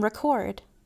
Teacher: E in re becomes ruh in record. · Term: schwa